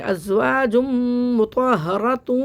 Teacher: یہاں پہ میم مشدد کے بعد پہ غنہ ہو رہا ہے، دو پیش کی تنوین کے بعد میم مشدد آ رہا ہے